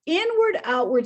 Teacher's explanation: where the stress is initial it's in the very beginning